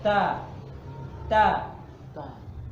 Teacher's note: da itu tipis jadi dibenturkan lidahnya